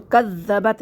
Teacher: یہ نبری والا حرف تھا کذ، اس میں زبان دانتوں سے باہر آنی چاہیے